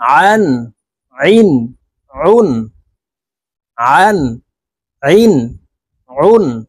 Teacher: আইন হরফের উচ্চারণ হলকের মধ্যখান থেকে চাপ দিয়ে উচ্চারণ করতে হবে